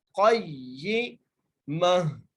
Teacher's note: क़ाफ को मोटा करके और क़ाफ को या से मिलाकर पढ़ना है। क़य्यिमा, आगे मीम के ऊपर ज़बर है और ता को हम वैसे ही करेंगे, इस ता को हा में तब्दील करके पढ़ेंगे और हा को साकिन कर देंगे।